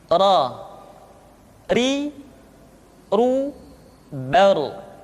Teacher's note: huruf ra, diucapkan dengan menyentuhkan punggung lidah dengan langit-langit